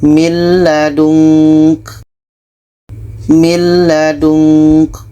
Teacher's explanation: Bunyi nun masuk ke la dan tidak ada dengung. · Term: idgham bila gunnah